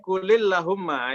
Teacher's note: Kenapa kul dengan Allahumma menjadi kulillahumma? Itu namanya iltiqau sakinain, menjadikan harokatnya kasroh.